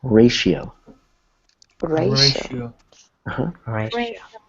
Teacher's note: the TI kind of makes like an SH sound